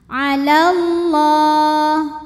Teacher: alif lam menghadapi huruf syamsiah yaitu lam, maka alif lam tidak dibaca atau disebut dengan idgham syamsi.